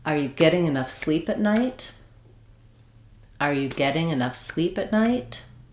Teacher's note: So, my beats are on get sleep and night. · getting has two syllables where the first syllable is the stressed one. The ing doesn't matter.